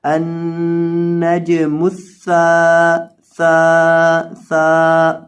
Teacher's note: اب یہاں سا کے بعد الف ہے تو اس کو تھوڑا سا 1 سیکنڈ کے برابر، 1 الف کے برابر لمبا کریں گے